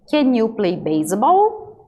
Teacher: aqui eu já vou aumentar a entonação no final